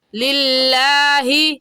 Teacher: लफ्ज़ अल्लाह से पहले ज़ेर आ गया तो लफ्ज़ अल्लाह को बारीक पढ़ेंगे और बारीक करने का तरीका कि आपके दोनों होंठ फैल जाए